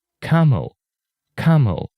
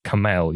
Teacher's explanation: the stress is on the first syllable not the second one